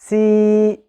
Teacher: The e sound that I am making is articulated from AlJaf, or from the empty space in the throat and mouth.